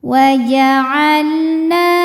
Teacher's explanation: Wa'alna na dihukumi dengan mad thobi'i zahiri. Sebab ada alif didahului baris fathah, maka huruf nun panjang dua harakat.